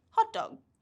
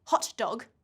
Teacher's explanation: because the t and the d are so similar and they're right next to each other we drop the first